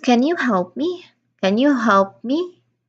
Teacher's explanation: Rising again rising intonation is used.